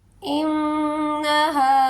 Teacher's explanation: نون مشدد ہے، یہاں پر گنہ بھی ہوگا، اور ہا کے ساتھ الف ہے، یہ الف مدہ ہے، اسے ایک الف کے برابر کھینچ کے ادا کریں گے